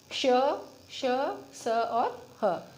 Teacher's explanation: जब वायु तेज गति से रगड़ खाने के कारण ऊष्मा उत्पन्न करती है। जब वायु हमारे मुख से बाहर आती है और वो तेज गति से बाहर आती है, उससे एक रगड़ उत्पन्न होती है हमारे मुंह के अंदर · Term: ऊष्म व्यंजन